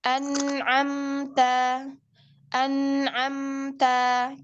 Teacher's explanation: kan artinya jelas itu masuknya ke tingkatan gunah yang naqis anamta anamta kan pasti ada gunahnya namun lebih sedikit lagi daripada yang ikhfa dan iqlab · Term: naqisoh